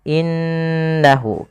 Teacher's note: suara nunnya harus kita tahan innahu. Karena nun berharakat tasdid kita hukumi dengan bacaan ghunah